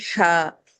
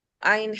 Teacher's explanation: ہا میں ہوا کا شور تھا، عین میں حلق چپک رہا تھا